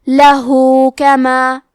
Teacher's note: کلمت لہو کے آخری میں ہاں پہ الٹا پیش ہے. یہاں حکم ہے مد صلہ صغرا، لہذا ہم اپنی آواز 2 مد کے برابر لمبی کریں گے